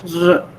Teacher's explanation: It is produced like a fricative, but there is no audible friction. We just say r, that's it. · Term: r sound